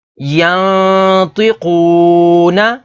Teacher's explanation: اس میں نون ساکن کے بعد اگلا حرف طا ہے، طا حروف اخفا میں سے ہے تو یہاں پر اخفا یعنی غنہ کر کے پڑھیں گے